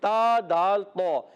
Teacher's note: ता अदा होता है जबान का सिरा ऊपर के दांतों की जड़ों से